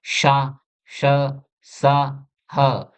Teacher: ऐसी ध्वनियां जिनमें हवा सकरे मार्ग से घर्षण करते हुए निकलती है। यानी जब इनका हम उच्चारण करते हैं तो हवा इस प्रकार निकलती है जैसे घर्षण करती हुई।